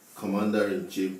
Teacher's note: Commander-in-chief, the stress is on COM.